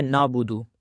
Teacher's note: عین کو جو ہے وہ واضح طور پر نہیں پڑھا جاتا